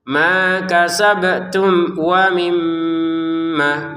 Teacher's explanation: Mim bertasdinnya kita tekan dengan dengungan. Kemudian panjangkan dua harakat saja.